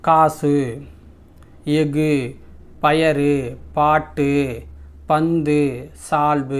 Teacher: வல்லின உகரங்களும் சொல்லின் இறுதியில் வரும்பொழுது ஒரு மாத்திரைக்கு பதிலா அரை மாத்திரை தான் ஒலிக்கும் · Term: குற்றியல் உகரம்